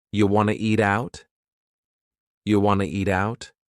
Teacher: And then we have reduced want to to become wanna. This is a common reduction in English.